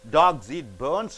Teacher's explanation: Dogs and bones are nouns. So, you are stressing on high pitch. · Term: noun intonation